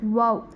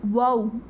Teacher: இந்த ஃபா, வாவுங்கிற வார்த்தையை சொல்லும்போது பார்த்திங்கன்னா நம்மளுடைய உதடு 2 வாவ், அந்த உதடோட ஷேப் வந்து மாறும். அந்த உதட்டை குவிச்சு நம்ம சொல்கிறோம்ல, அப்போ தான் அந்த வார்த்தை வருது.